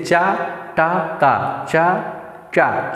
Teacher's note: चा चा चा बोलते समय हमारी जीवा क्या है ऊपर ताल से टच कर रही है और त बोलते समय दांत पे जबकि ट बोलते समय दोनों